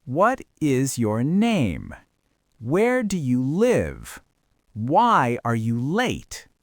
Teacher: We use falling intonation for what we call wh questions. These are questions that start with who, what, where, when, why, or how. · You are asking for specific information. And because you are asking for facts, the intonation pattern mimics a statement of fact. It falls.